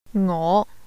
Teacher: The Cantonese word for I is a rising tone.